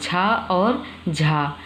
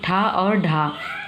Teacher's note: और चा वर्ग में देखें तो छा और झा, टा में देखें तो ठा और ढा, ये सब महाप्राण होंगे।